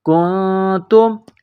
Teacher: تب دو، نون زبر نا، تب دون، وما، واو زبر وا، میم الف زبر ما، وما کنتم، کاف کو نون کے ساتھ پلس کرنا ہے۔ کنتم، نون ساکن کے بعد تا ہے، حروف اخفا ہے تو یہاں آواز ناک میں چھپائیں گے، اس ناک میں آواز چھپانے کو اخفا کہتے ہیں۔